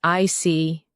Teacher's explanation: your tone drops slightly to show calmness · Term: falling tone